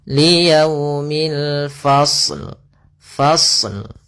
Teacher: alif lam yang kita tulis dan kita baca dengan jelas suara lamnya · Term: alif lam qamariyah